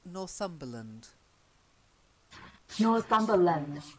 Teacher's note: place names so we say Northumberland I know we say land but when it's a place named the land it often becomes the schwa lund